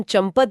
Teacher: चंपत में जो अनुनासिक ध्वनि आ गई है ना वो आधा मा जब हम चंपत बोलते हैं तो उस आधे म के कारण हमारे होठ एक पल के लिए बंद हो जाते हैं